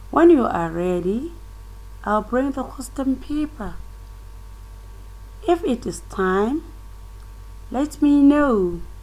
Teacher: In fall and rising tone, you can see it is in one sentence, but you can see the first part is falling and the second part of the sentence is rising.